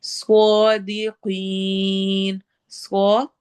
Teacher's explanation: स्वाद हैवी होगा, कॉफ भी हैवी होगा